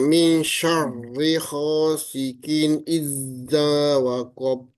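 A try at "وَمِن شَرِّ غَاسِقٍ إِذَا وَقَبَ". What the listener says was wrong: Oke, zanya jangan ditahan idza, tapi idza. Wa min syarri ghasiqin idza.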